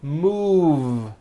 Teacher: Move has that voiced V sound.